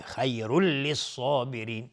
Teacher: خا از حروف استعلاز غلیظ طرف میشه و را هم حکمش استعلاز چون تنوین رفع روشه و تنوین بعدش لام ادغام بدون غنه.